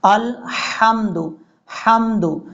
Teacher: حمزہ اور لام کے بعد جو ہا ہے یہ ہا بریک ہے، لیکن کئی لوگ اس کو بھاری ساؤنڈ کے ساتھ پڑھتے ہیں، الحمد پڑھ جاتے ہیں۔